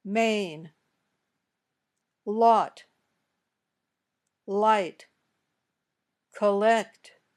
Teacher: air comes up out of your nose when you say all the air comes out of your mouth around the sides of your tongue